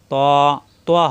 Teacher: ত মোটা হবে কিন্তু মুখ গোল হবে না